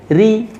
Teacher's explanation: ketika ro harokat kasrah ini tipis, lidahnya turun.